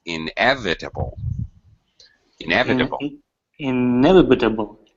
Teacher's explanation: inevitable second syllable stress